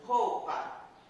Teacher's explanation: no rou eu tenho uma vogal, som forte, e tenho uma semivogal, o som mais fraco. E no pá, tenho também somente uma vogal.